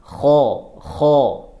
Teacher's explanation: Jadi kha sama gha itu sama-sama tenggorokan atas. Kalau huruf kha itu ada ngoroknya. Kha sambil ditebalkan, naikkan pangkal lidahnya.